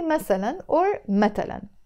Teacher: this ث is usually pronounced either as a ت or a س in Lebanese Arabic. So we don't say مثلاً in Lebanese Arabic, we say مثلاً or مثلاً.